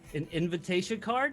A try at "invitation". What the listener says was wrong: Okay, because you said inventation card, and